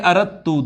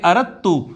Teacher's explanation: اردت جو ہوتا ہے نا اردت، اس کو پڑھیں گے اردت، دال اور تا کا ادغام ہو جائے گا